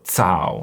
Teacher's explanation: when you make the C sound in Chinese, it sounds like a TS, and you should feel, when you say it, you should feel air hitting your hand. So you should feel this air hitting your palm.